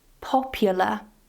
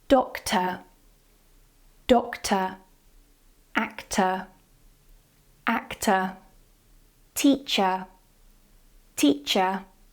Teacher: in most British English accents they don't pronounce the R at the end of words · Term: non-rhotic